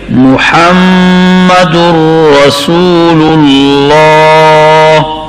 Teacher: ہا حلق کے درمیانی حصہ سے ادا کریں گے